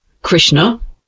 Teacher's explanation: the tongue curls backward and touches the hard pallet near the back it's a harder sharper sh sound